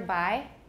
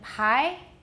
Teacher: the biggest difference between buy and pie is not a difference in voicing but a difference of aspiration right so bi has no aspiration it's not really voiced either